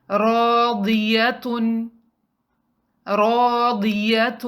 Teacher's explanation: اس word میں again الف مد آ رہا ہے تو را کو 2 کاؤنٹ لمبا پڑھیں گے۔